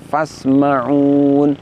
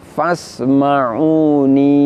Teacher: Jadi setelah nun kasroh aslinya terdapat ya sukun. Namun dalam keadaan waqaf ya sukunnya ditiadakan, lalu ketika kita waqaf nun kasrahnya diganti dengan nun sukun. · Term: hadzf